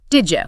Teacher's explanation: When the hard D sound in did meets the palatal Y sound in U, the mouth finds it incredibly inefficient to pronounce them separately. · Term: assimilation